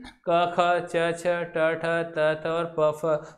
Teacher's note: वे वर्ण जिनका उच्चारण जब हम करते हैं तो मुख से कम हवा निकलती है, वाइब्रेशन भी कैसा होगा? कम होगा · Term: अघोष